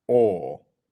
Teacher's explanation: Notice how in British English we don't say or. We're not pronouncing the R. It's just or.